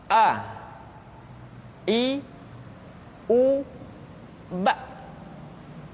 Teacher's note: Makhraj ketika mengucapkan huruf A berada pada tenggorokan yang terjauh.